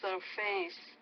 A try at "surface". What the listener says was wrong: Okay, I would say the stress is on more surface, so stress on that first syllable, not the second.